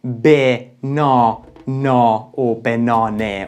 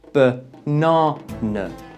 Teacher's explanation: in the word banana, we got 2 schwa sounds in the beginning and the end of the word. and the second syllable is stressed.